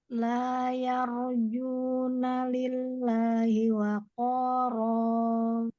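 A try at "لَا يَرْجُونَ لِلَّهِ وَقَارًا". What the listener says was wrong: Masya Allah. Silakan, Masya Allah, barakallahu fiik.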